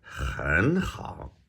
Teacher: So 很 is a third and 好 is a third tone, right? But the first one's going to change to a second. So we'll say 很 好.